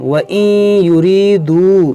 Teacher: یہ واو مدہ ہے، واو ساکن سے پہلے پیش ہے تو اس کو کھینچیں گے